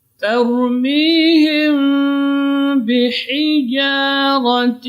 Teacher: Mim mati kita dengan ba, ini ikhfa syafawi.